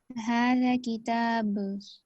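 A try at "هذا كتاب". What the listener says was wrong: ذا کو تھوڑا سا لمبا کریں. ھذا ذا.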